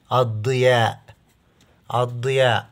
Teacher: حرف الضاد عند دخول الالف واللام عليه يصبح مشدد لانه حرف شمسي